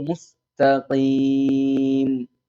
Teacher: കുറച്ചും കൂടി വായ നിറച്ച് ഖ എന്ന് പറയുമ്പോൾ സ്വാഭാവികമായിട്ടും മുമ്പത്തെ തായിലേക്ക് ചെറിയൊരു പകർച്ച ഉണ്ടാവും